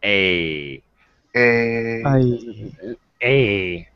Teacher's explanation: my mouth is open more a a a and the sound is coming from quite far back in my throat